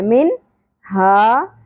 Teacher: نون ساکن کے بعد ہا حرف حلقی میں سے آ گیا اس لیے یہاں پر اظہار ہوگا، اخفا نہیں کرنا، چھپانا نہیں ہے، نون کی آواز کو ظاہر کر کے پڑھنا ہے